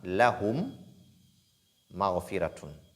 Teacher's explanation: c'est l'assimilation labiale. Ça se passe au niveau des lèvres. Au niveau des lèvres, parce que toutes les deux lettres ont un même point d'articulation, parce qu'il s'agit d'une même lettre, mim et mim.